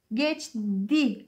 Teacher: Geçti kelimesine nasıl bir ses olayı vardır dersek, geçti aslında bu. Ç sert sesi, yanındaki yumuşak sesi kendisine benzetmiş. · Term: ünsüz benzeşmesi